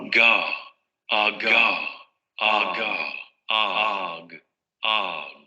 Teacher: Vibración de cuerdas vocales, oclusión en la zona del velo del paladar, y luego explosión de la salida del aire. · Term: Velar oclusivo sonoro